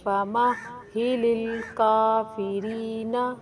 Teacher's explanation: ہا کے اوپر جو سائن ہے تشدید کا، اس کی وجہ سے اس کو سختی سے اور ذرا رک کر پڑھیں گے۔